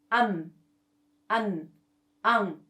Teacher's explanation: put your hand in front of your nose when you pronounce you can feel the soft air coming out from your nose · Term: nasalized sounds